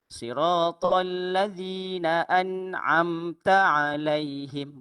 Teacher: Bunyi tak qalqalah ataupun tadallu ataupun pantulan bagi huruf nun dan juga mim.